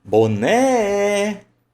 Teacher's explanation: o boné ó, sílaba tônica, é a última